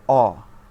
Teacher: নিম্ন মধ্য পশ্চাৎধ্বনি স্বর অ